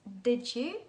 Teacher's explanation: we have d and y together, and they give us that blend of j